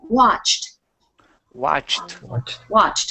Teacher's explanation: it doesn't sound like a d at all we're putting e d on the end but what it sounds like is a t